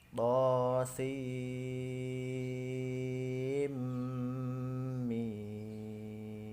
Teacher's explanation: Huruf sin dan huruf mim. Dibaca panjang 6 harokat karena mushaqal harfi. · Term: mad lazim mushaqal harfi